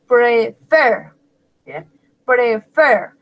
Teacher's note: la última sílaba está acentuada, pues lleva el énfasis como el acento.